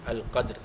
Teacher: qalqalah sughra pada dal yang sukun